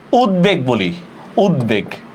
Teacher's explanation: সন্ধিবদ্ধ শব্দে বফলার উচ্চারণ বহাল থাকে